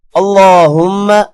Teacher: میم پر غنہ کریں گے اور اللہ کے نام کو ہم موٹا کریں گے